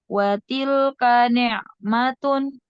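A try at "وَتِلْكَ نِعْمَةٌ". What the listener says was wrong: Jangan tun. Ni'matun. Ya, tapi kasih tanwin, kasih nunnya. Ni'matun. Jadi jangan tun ya, tapi tun murni.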